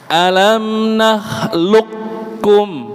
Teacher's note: nakhluq ada sukunnya, kemudian kaf, tapi tidak dibunyikan qalqalahnya. Itu qaf bertemu dengan kaf.